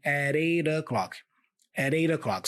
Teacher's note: And at 8 o'clock, I'm joining all the sounds here and I'm saying at 8 o'clock, at 8 o'clock. So I have two flap sounds here, da-da, and the preposition of, I reduce it to a schwa sound, So at 8 o'clock, at 8 o'clock.